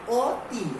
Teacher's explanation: সংবৃতের পূর্বের অটা সংবৃত হয়ে যাবে, মানে অ ও হয়ে যাবে